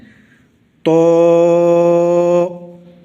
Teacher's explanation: زبان کی نوک اوپر والے دانتوں کی جڑ میں لگانی ہے اور آواز کو موٹا رکھنا ہے، منہ کے اندر آواز کو بھرنا ہے، تو۔